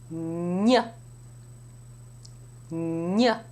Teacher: It is pronounced with the central part of the tongue touching the hard palate. There is airflow through the nasal passages, and then there is a sharp release of the tongue from the palate. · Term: gn sound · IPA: /ɲ/